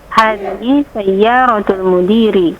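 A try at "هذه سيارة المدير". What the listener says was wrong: Mumtaz, mumtazah. Masya Allah, anti mumtazah.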